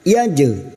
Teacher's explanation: Jim sukun yang mati asli di tengah kalimat jangan lupa dipantulkan. Yaj. Namanya qalqalah sugra.